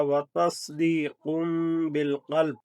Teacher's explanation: اقلاب ہے یعنی کہ میم کی آواز ہوگی